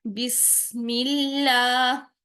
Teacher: बिस सीन में सीटी पैदा करेंगी, सीन को बारीक रखेंगी, मीम की जेर को और बाकी जेर को बारीक रखेंगी।